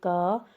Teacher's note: क के साथ अ की साउंड आ रही है. दैट मीन्स हमें अ की हेल्प लेनी पड़ रही है.